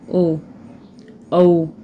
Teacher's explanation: ओ और जो औ होते हैं ये कंठोष्ठ, कंठ प्लस ओष्ठ दोनों से मिलकर के बोले जाते हैं